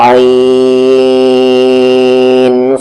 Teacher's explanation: عین میں کیا ہو رہا ہے؟ حروف لین کا مد ہو رہا ہے